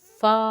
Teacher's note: نیچے والا ہونٹ جو ہے وہ اوپر والے دانتوں کے ساتھ ٹچ ہوئے پھر پڑھنا